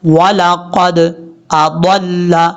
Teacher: ضاد پر پڑھا جائے گا، حروف مستعلیہ میں سے ہے